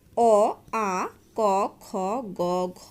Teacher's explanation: যেসব ধ্বনির উচ্চারণ স্থান কণ্ঠনালীর উপরিভাগ বা জীবামূল তাদের কণ্ঠধ্বনি বলে